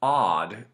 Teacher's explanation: odd is way open in the back of the mouth